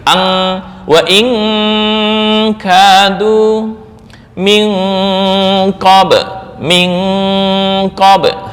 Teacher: Cara membacanya, dengung lebih besar daripada ikhfa. Berarti langsung NG. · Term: ab'ad